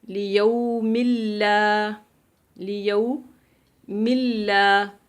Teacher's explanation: نون تنوین کو آپ نے لام میں داخل کرنا ہے لیکن غنہ نہیں کریں گے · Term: ادغام